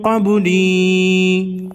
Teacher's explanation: قبلی میں با ساکن کو ہلا کر پڑھیں گے